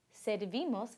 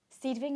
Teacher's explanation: the stress in the nosotros and vosotros forms does not fall on the last syllable of the stem, but on the ending